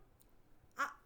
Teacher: వీటి ఉచ్చారణ స్థానము కంఠః ఆభ్యంతర ప్రయత్నము వివృతం